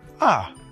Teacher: The fourth tone is a falling tone.